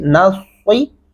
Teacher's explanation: यहाँ पे लोग क्या पढ़ रहे होते हैं, इहदिना सिरातल, नस्सी सीन ऐड करेंगे तो गलत हो जाएगा, क्योंकि स्वाद लिखा हुआ है, तो स्वाद पढ़ते हुए हमारे होंठ गोलाई की तरफ जाते हैं